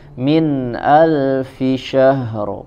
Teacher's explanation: Khairum min di sini ada idhar, tidak ada tambahan gunnah